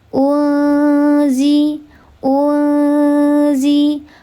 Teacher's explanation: Namanya ikhfa hakiki ausat karena nun sukun bertemu dengan salah satu huruf ikhfa hakiki ausat. Dibacanya disamarkan disertai dengan ghunnah tiga harakat.